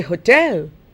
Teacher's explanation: the British accent, the stress is on the second syllable, and therefore they say hotel. So she had a problem understanding hotel because they say hotel.